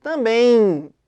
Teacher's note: Quando a gente fala também, você já reparou que sai um I nessa pronúncia? Também. Sai um I nessa pronúncia. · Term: ditongo nasal